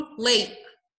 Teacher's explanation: وفي الامريكان بقى هما they hold ال T